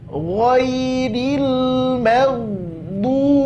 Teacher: Ra tidak tebal. Maka mimnya tipiskan, ro-nya tebalkan.